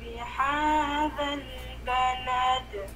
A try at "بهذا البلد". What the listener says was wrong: Oh, yung ha, yung ha mo, sister. Yung ha mo ay biha, hindi siya biha, nagiging ha. Bihadal balad.